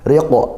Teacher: ra-nya tarqiq karena kasrah ditipiskan